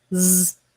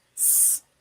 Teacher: One is voiced, which means we use our voice to make the sound z. And if we don't use our voice, s, we get the s sound.